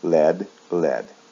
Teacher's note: in the past form and in the past participle there's no a and it is pronounced with a short e sound